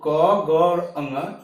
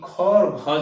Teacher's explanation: क, ग और अंग ये अल्प प्राण होंगे, जबकि ख और घ जो होगा ये महाप्राण होगा।